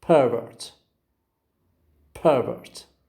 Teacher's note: You can easily see that the first syllable receives stress.